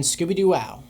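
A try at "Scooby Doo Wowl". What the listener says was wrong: It's not wow. It's not pronounced Scooby Doo Wow. It's wow with an L at the end of it.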